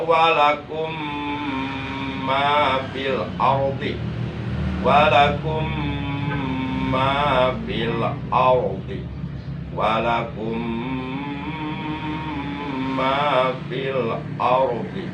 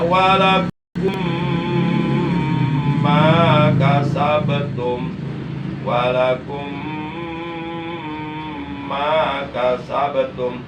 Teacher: Karena ada mim sukun bertemu mim. Jadi mim sukunnya wajib diidghamkan, dimasukkan ke dalam huruf mim yang ada di depannya. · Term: idgham mutamasilain